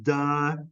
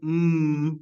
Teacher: it's the difference between sounds like duh which comes out of your mouth and um which comes out of your nose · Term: nasal